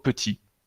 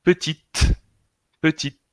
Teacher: Petit masculino, como si la T no existiera, y petite femenino.